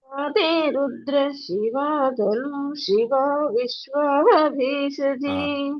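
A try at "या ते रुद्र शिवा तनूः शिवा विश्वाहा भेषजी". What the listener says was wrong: తను శివ అక్కడ విసర్గం తర్వాత షా ఒత్తు రావాలి మళ్ళీ ఒకసారి వినండి యాతే రుద్ర శివ తను శివ విశ్వాహ భేషజీ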